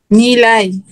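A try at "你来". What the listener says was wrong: নি লাই। নিটা থার্ড টোনে বলেন, নি,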